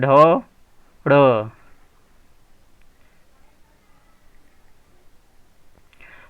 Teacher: जीभ एक बार मुख के ऊपरी छत तथा एक बार मुख के नीचे की छत से टकराती है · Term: द्विगुण व्यंजन